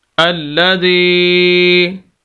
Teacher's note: ایک تو شد ہے، سخت کر کے پڑھیں گے، زال کو یا کے ساتھ ملا دیں گے، اور یہ یا مدہ ہے، ہم زال کو لمبا کریں گے